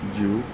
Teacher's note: so nine is said as jew so it is the second tone mark up and down